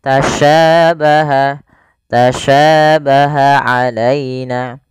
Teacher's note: Sya. Dan sya memiliki sifat namanya tafasyi. Tafasyi itu intisarus sauti fil fam, yaitu menyebarnya suara di mulut.